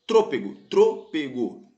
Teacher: antepenúltima sílaba é mais forte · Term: proparoxítono